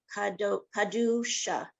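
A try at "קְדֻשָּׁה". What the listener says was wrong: Try the first letter again. Kit.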